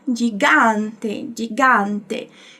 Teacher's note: do italiano a gente não tem esse som anasalado de quando a gente fala gigante percebe que o som passa aqui pelo nariz e isso vai